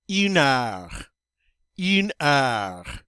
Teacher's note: the H is silent in French, so we're not going to hear that word. And instead, we're going to go right to the vowels.